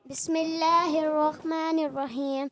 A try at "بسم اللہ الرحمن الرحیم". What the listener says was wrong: اچھا ہا کی ادائیگی کلیئر کریں. بسم اللہ الرحمن الرحیم.